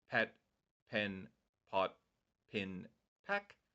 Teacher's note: there won't be very much vibration from your vocal cords. They are voiceless. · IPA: /p/